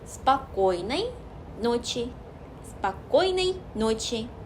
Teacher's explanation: 꼬의 강세가 있기 때문에 앞에는 흘려서 말하다가 꼬 찍고 또 나머지도 흘리시면 돼요.